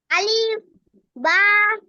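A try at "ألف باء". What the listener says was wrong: আলিফের টান দিলেন কেন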